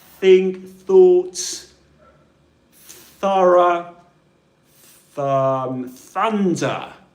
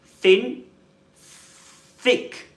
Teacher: the specific sound there to practice is the one with no buzzing sound in the throat, namely th. The sound used at the beginning of the word think or thought. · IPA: /θ/